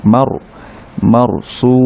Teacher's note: র সাকিনের আগে যদি ফাতহা থাকে তখন এই র সাকিনটাকে একটু মোটা করে পড়তে হবে